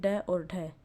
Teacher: वसे जैसे ड और ढ उत्क्षिप्त जिनके उच्चारण में जेवा की नोक झटके से नीचे गिरती है तो वह उत्क्षिप्त अर्थात फेंका हुआ ध्वनि कहलाती है